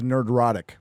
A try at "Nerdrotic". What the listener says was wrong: You say Nerdrotic like there's a J in there somehow.